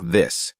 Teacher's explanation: The th is now voiced, meaning you engage your vocal cords as you produce the sound. Put your hand on your throat as you say this, and feel the vibration.